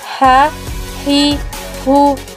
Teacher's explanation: huruf ini dikeluarkan dari tengah tenggorokan kita ketika dilafalkan persis seperti kita melafalkan kata ayah sah-sah begitu cara melafalkan huruf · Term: huruf h